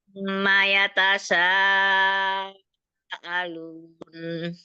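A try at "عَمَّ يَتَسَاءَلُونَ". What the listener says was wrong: Itu Umi masih ngambil dari tengah lidah itu sinnya. Dia ditaruh ujung lidah ditaruh di belakang gigi seri bawah.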